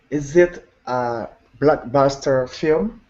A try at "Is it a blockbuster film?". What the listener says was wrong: Very good. Rising tone.